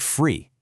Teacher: people pronounce the th sound in a word like three as an f sound. So it sounds like free. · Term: th fronting